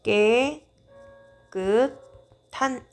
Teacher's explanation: 축약이 사용이 되어서 거센 소리가 됐네요